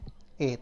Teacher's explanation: कंठ और तालब दोनों से मिलकर बना इसमें कंठ भी लग रहा है और ल तालब भी लग